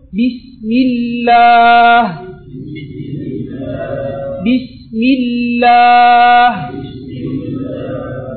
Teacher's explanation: வல்லினமாக நாங்க சொல்லாம மெல்லினமாக சொல்லுவோம்